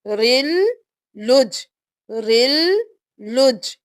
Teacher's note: اب لام ہو گیا رل کے ساتھ، پھر لام پیش جیم پہ تشدید ہے، جیم سے ملائیں گے، لام کو جیم کے ساتھ، پہلے را کو لام کے ساتھ ملایا، دوبارہ لام کو اپنی حرکت کے ساتھ پڑھ کر جیم کے ساتھ ملایا